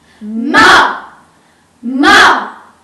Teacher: The fourth tone starts out high, but drops sharply to the bottom of the tonal range. English speakers often associate this tone with an angry command.